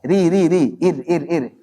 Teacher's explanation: Kemudian saat mengucapkan ra yang tipis, ri, kayak maju ke depan ya. Lebih dominan di ujung gitu. Bukan agak masuk ke punggung. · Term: ra tipis